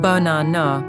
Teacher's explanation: The stress is on the middle syllable. The first and last A's become weak. They become schwas.